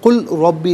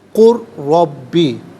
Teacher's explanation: قل ربی نہیں، قر ربی، قل ربی، را کی آواز ہوگی اور را پر زبر ہے، را کو پر کر کے پڑھا جائے گا۔ مشدد ہے، جماؤں کے ساتھ پڑھیں گے۔